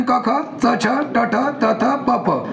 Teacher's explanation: ज्याचा उच्चार करायला तीव्रता असते तीव्र उच्चार म्हणजेच कठोर व्यंजन